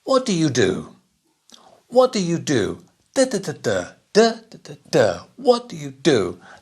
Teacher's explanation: the auxiliary words are very quiet not so much stress and the next full verb is stressed